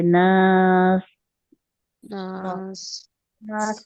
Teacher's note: सीन जब हम उसको साकिन कर रहे हैं, सीटी की आवाज प्रोमिनेंट होनी चाहिए।